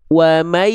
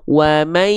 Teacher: Maka betul dia idghamnya bigunah. Ada dengung suara yang masuk ke dalam rongga hidung.